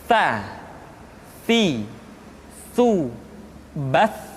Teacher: lidah disentuhkan dengan dinding dua gigi seri bagian atas.